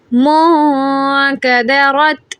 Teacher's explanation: نون ساکن کے بعد کاف ہے، اخفا کریں.